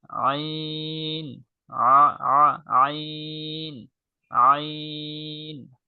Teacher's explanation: নরম করে কণ্ঠনালীর মধ্যখান থেকে